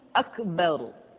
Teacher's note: huruf ro mesti dibaca tafkhim atau dibaca dengan suara yang tebal